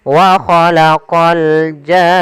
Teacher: Panjangkan janya dulu enam harakat baru masuk ke nun. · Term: mad lazim kalimi musaqqal